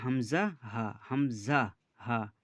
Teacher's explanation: হালাক বা কণ্ঠনালী শুরু হতে উচ্চারিত হয় হামজা হা